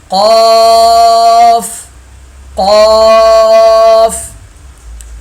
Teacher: فا فا فا فا قاف قاف قاف، زبان کی جڑ کا آخر، زبان کی جڑ کا آخر جو کوے کے پاس ہے، جب اوپر کے تالو سے لگے تو قاف ادا ہوتا ہے۔ کوا کہیں آپ وہ نہ سمجھیے گا کہ جو اڑتا ہے پرندہ ہے، وہ نہیں، یہ منہ کے اندر ایک حصہ ہے، اسے کہا جاتا ہے۔